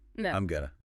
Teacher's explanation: Just changing four syllables to two makes a huge difference.